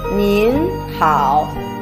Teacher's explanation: Here is a combination of ne and in, the second tone.